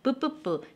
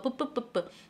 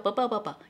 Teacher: 자 입술 소리 양 입술이 부딪혀야 됩니다. 양 입술이 있어야지만 나오는 소리 양순.